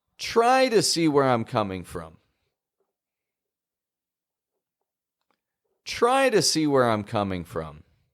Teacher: If you notice that the word try is raising in pitch, you're correct.